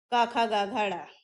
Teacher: अब इसमें क्या फर्क है, स्पर्श में मैंने बताया ना आपको, हमारे स्वर तंत्र के किसी ना किसी भाग से टच होकर स्वर निकलते हैं। क वर्ग को कहा जाता है कंठे, ये हमारी ध्वनि निकलती है गले से, क ख ग घ ड़।